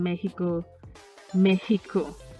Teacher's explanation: some exceptions like the x the x in mexico mexico right sounds like a raspy h